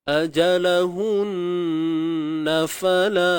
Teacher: Nun bersabdu. Wajib kita dengung. Kadarnya 2 harakat.